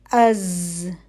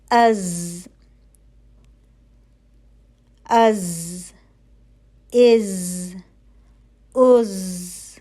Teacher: یہاں پر بھی زبان اور دانتوں کے درمیان فاصلہ ہوگا تاکہ سیٹی کی سی آواز پیدا ہو سکے. سیٹی کی آواز پتلی ہوگی اور تھوڑی سی جو ہے وہ بزنگ ہوگی